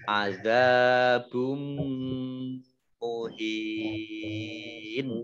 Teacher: dhammah tanwin bertemu dengan huruf mim, bacaan idgham bi gunnah, mendengung ya. Mim ditandai mimnya ada tasdidnya.